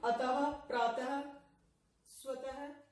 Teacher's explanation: विसर्ग का उच्चारण जो है ह से होता है